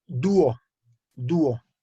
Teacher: estamos separando la U de la O, tenemos dos sílabas en la palabra dúo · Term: hiato